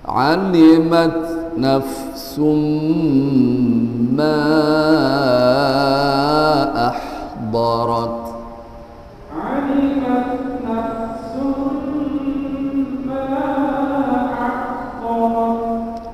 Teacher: Ketika diucapkan suara nun sudah tidak terdengar sama sekali, dia sudah melebur masuk ke huruf mim, itu namanya idgham ma'al gunnah.